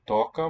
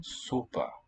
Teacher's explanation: listen to the different O qualities here. Toca, more open. Sopa, more closed.